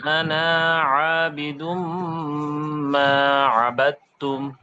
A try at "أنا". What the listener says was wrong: আচ্ছা, আপনার আনাটা কিন্তু এবারেও একটু লম্বা হয়ে গেল, যেটা পূর্ণ একালিফ বলা যায় না, তবে পুনে এক আলিফের মতো হয়ে গেল। হ্যাঁ, আরেকটু কম হবে, এটা স্বাভাবিক। মনে করতে হবে এখানে আলিফ নেই। আনা।